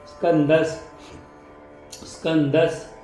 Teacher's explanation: स्कंदस स्कंदस सला क आणि पुढे नवला द आणि पुढे विसर्ग स्कंदस विसर्गाचा उच्चार स सारखा करायचा